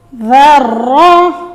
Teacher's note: یہاں پہ ہم نے خیال کرنا ہے کہ ذال کو نرمی سے پڑھیں اور را کو موٹا کریں